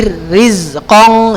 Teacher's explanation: rohnya tidak juga menjadi bergetar terlalu berlebihan di ujung lidah